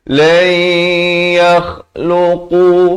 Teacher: kha di hujung kerongkong, qaf pula di pangkal lidah.